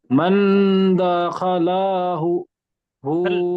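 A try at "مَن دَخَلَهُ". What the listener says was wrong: লা টান হয়ে যাচ্ছে, দাখালাহু। স্পিডে বলতে হবে। মান দাখালাহু। আরো স্পিডে বলতে হবে, হারকাত গুলো জবর গুলো আরো স্পিডে বলতে হবে।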